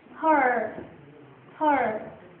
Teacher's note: it is long and tense.